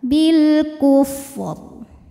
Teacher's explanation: Huruf ra apabila berhenti dibaca secara tafkhim. Kenapa? Karena di sini ra-nya pasti dimatikan. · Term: ra tebal